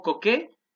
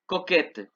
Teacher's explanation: No se pronuncia la T en el masculino, pero en el femenino sí.